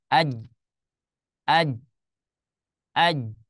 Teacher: huruf Jim kalau tidak dibaca qalqalahnya maka dia tidak mengalir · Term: sifat syiddah